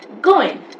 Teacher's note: entire word they keep it to 80 to 90% only and especially the last syllable is what they always drop like it's so minimal that you can hardly hear